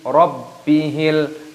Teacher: baknya berharokat tasdid, dibaca, ditekan ataupun diidghamkan